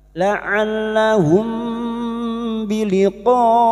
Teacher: Laallahum mim sukun bertemu ba ikfa syafawi. Mim sukun mendengung selama tiga harakat dan siap membunyikan huruf ba. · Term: ikhfa syafawi